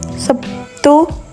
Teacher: Sebagai contoh, kata Sabtu dalam bahasa Indonesia lazim diucapkan Sabtu, yakni terlihat adanya bunyi B yang berubah menjadi P sebagai akibat pengaruh bunyi T. Bunyi B adalah bunyi hambat bersuara, sedangkan bunyi T adalah bunyi hambat tak bersuara. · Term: asimilasi